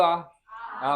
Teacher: एक तुम्हारा मूंज बना दूंगा, पहले याद आ बोलो, आ मुंह कैसे खोला तुम लोग? मुख द्वार को पूर्ण रूप से खोला जाता है, विवृत स्वर